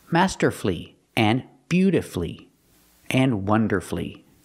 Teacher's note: With these words, the stress is on the first syllable. And you have two syllables before F-U-L-L-Y.